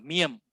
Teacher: Miem. Okey, dan terhasil pun daripada bibir dan angin keluar melalui hidung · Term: huruf M